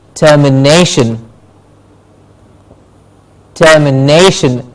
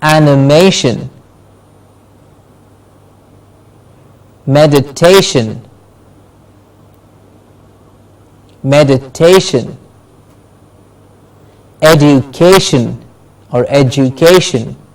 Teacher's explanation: the words that end with tion we stressed the syllable before Shin